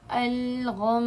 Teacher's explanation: اگر آخری حرف پر میم یا نون ہو اور ان پر تشدید ہو تو غنہ کرتے ہوئے رکیے، جیسے مثال کے طور پر ہے الغمی، وقفاً الغم، یعنی کہ اس کا 2 کاؤنٹ جتنا غنہ جو ہوگا وہ باقی رہے گا، حرکت ختم ہو جائے گی لیکن غنہ اور تشدید باقی رہے گی